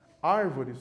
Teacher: Árvores, nós já vimos, possui 3 sílabas e a antepenúltima é a tônica.